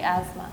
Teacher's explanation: a lot of people just take out the th completely